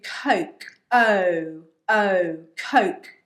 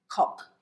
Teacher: So it's an O, it's a diphthong. Yeah. So your mouth has to move to make the sound O.